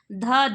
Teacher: ध दंत्य वर्ण है महाप्राण है घोष वर्ण है